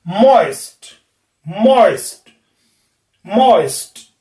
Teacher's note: ऑय में जीभ पीछे से आगे की तरफ आएगी। जीभ जो है हमारी वो पीछे से आगे की तरफ आएगी और ऊपर की तरफ भी जाएगी। औ जब बोलेंगे जीभ नीचे होगी, और ई जब तक हम बोलेंगे तब तक जीभ आगे या पीछे से आगे और नीचे से ऊपर चली जाएगी।